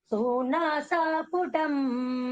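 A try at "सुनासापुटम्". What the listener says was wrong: சுனாசா சூ கிடையாது சுனாசா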